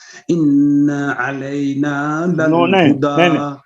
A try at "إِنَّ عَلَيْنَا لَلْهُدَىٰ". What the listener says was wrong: آپ نے نون کی زبر کو زیادہ کھینچ دیا ہے. ان علینا. نہیں آپ پڑھتے ہیں انا علینا. یہ نہیں، انا کا غنہ لمبا کر لیں لیکن زبر کو نہیں کھینچے.